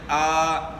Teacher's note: تو جس طرح حروف مدہ کو ایک الف کی مقدار کے برابر کھینچنا ہے، اسی طرح کھڑی حرکات کو بھی آپ نے ایک الف کی مقدار کے برابر کھینچنا ہے۔ حروف مدہ کی لمبی آواز جو ہے وہ 2 حرکات یعنی ایک الف کی مقدار ہے